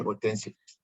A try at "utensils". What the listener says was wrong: Utensils. Utensils. Yes. S, utensils.